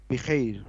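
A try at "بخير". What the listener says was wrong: نہیں را نہیں ملائیے ابھی، صرف خی کہیے آپ. بس اب آخر میں را ملا دیجئے. بخیر.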